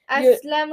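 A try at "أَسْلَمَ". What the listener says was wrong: No, you messed up. You said Aslamu, and he'll get kicked out of the village if he says Aslamu. When you're in this village, you better be Aslama. Aslama,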